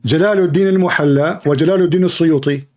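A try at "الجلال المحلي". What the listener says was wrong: It is not al-muhalla. It is al-mahalli. Al-mahalli. Al-mahalli.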